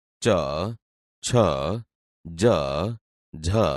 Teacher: તેવી જ રીતે ચ, છ, જ, ઝ અહીંયા બોલતા તમે જોશો કે આપણી જીભ તાળવાને અડે છે, તેથી તે તાલવ્ય વ્યંજન છે